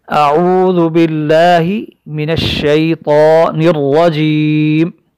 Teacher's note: اعوذ باللہ من الشیطان الرجیم، را مفتوحہ، را پر زبر کی وجہ سے اس را کو موٹا کر کے پڑھیں گے ہم۔